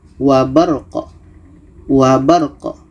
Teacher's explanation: qaf ini adalah qalqalah, ada gema